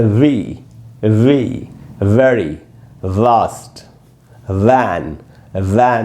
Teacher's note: हवा का झोंका जब एफ बोलेंगे तो निकलेगा, एफ, ऐसे। ये है वी, इसमें हवा बंद रहती है, लेकिन ऊपर के दांत नीचे के होठ पे लगेंगे और होठ आपस में बिल्कुल भी टच नहीं होने चाहिए।